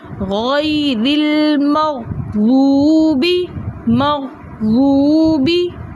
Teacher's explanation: واو ساکن سے پہلے پیش ہونے کی وجہ سے یہ واو مدہ بن گیا, جس کی وجہ سے ہم نے اس کو 2 حرکت کی مقدار کھینچ کر پڑھا